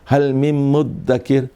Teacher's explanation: اس کو مذکر کیا اور اس کو مدکر کیا، ذال کو دال سے بدل دیا